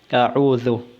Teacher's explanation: Ang dhal ay dapat na nakalabas ng kaunti ang dulo ng iyong dila. A'udhu. Dapat nakalabas ng kaunti ang dulo ng iyong dila upang mabigkas ng tama ang dhal.